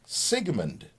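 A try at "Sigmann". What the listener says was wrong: Nope, no D on it. M-A-N-N. Sigmund.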